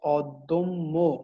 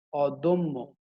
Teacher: দয়ের সঙ্গে যে অটি আছে এটি হচ্ছে মধ্য অ। এই মধ্য অয়ের পরের ধ্বনিতে জ ফলা আছে, এজন্য মধ্য অটি ওতে রূপান্তরিত হচ্ছে, দটি দো হয়ে যাচ্ছে